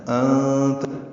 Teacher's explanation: انت نون ساکن کے بعد تا آنے کی وجہ سے اخفا ہے